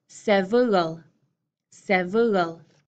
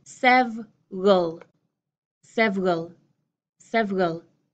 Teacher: we're going from three syllables, looks like it should be three syllables, down into two syllables. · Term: shortened, reduced pronunciation